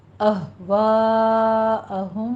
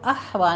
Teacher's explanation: اہوا میں ہا جو ہے عکس حلق سے نکلے گا، اس کو احوا نہیں کہنا، ہا نہیں ہے، ہا ہے، ہا، ٹھیک ہے، پورا آواز سے پڑھنا ہے۔